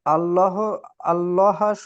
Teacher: লাম মুসাদ্দাতের পূর্বে জাবার এসেছে হুম। তাই এটিকে পুর করে পড়তে হবে। হুম, পুর অর্থাৎ ল করে পড়তে হবে।